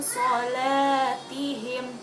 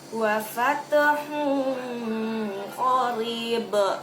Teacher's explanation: hukum bacaannya yaitu samar-samar didengungkannya. Jadi samar-samar, ada dengungan juga di hidung, didengung tapi samar-samar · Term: ikhfah